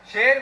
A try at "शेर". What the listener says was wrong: शेर नहीं, शेर। सा नहीं, शा। शेर।